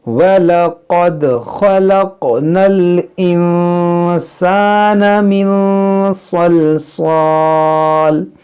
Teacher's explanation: यहाँ पर देखें वलक़द, क़ाफ़ को मोटा करेंगे, दाल में कलकला करेंगे, यहाँ ख़ा को मोटा करेंगे, क़ाफ़ को मोटा करेंगे, ख़लक़नल, इस नून को लाम से मिलाएंगे। यहाँ देखें नून साकिन के बाद सीन है, तो यहाँ पर इख्फ़ा करेंगे, यानी नाक में आवाज़ ले जाएंगे। यहाँ देखें नून साकिन के बाद स्वाद है, तो यहाँ पर भी इख्फ़ा होगा।